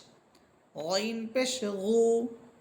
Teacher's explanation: গইন এবং খ এই দুইটা হরফের মাখরাজ এক, কণ্ঠনালীর শেষ।